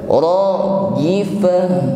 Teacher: rajifatu yang sebelumnya dibaca ta marbutah maka berubah menjadi ha.